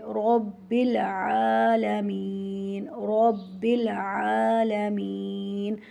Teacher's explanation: رب میں را کو موٹا کر کے پڑھیں گے کیونکہ اس کے اوپر زبر ہے، اور آ کے اوپر کھڑی زبر ہے تو 1 الف کے برابر لمبا کریں گے